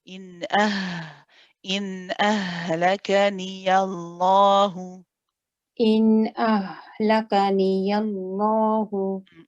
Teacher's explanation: don't forget the ha from the bottom of the throat